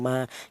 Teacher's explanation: huruf mem dan huruf ba ini dihasilkan dari kedua bibir yang rapat ya. Kita bilang ma, kita bilang ba, kedua bibir kita rapat dulu.